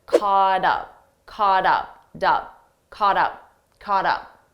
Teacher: we have a t between two vowels again I'll pronounce it as a soft D · Now, because up is a vowel, so now we have caught up, we have a T between 2 vowels. Again, I'll pronounce it as a soft D, but I have to combine the sounds together.